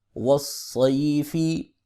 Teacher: واو زبر صاد وص، صاد زبر یا صی، وصی، فا زیر فی، وصیفی، صاد حروف مستعلیہ میں سے ہے، اس کو ہمیشہ موٹا پڑھیں گے اور سیٹی کی آواز سے پڑھیں گے۔ یا ساکن سے پہلے زبر آ رہی ہے، یہاں پر لین ہوگا، تھوڑا سا کھینچ کے پڑھیں گے۔ وقف کی صورت میں زیر والا حرف ساکن ہو جاتا ہے لہٰذا یہاں پہ فا ساکن ہو جائے گی۔